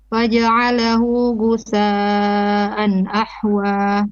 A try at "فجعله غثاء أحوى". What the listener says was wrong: Your ghain has a bit of a ga in there. And the tha, this is mad al muttasil. This has to be minimum 4 beats. Others, they can do 5 beats as well.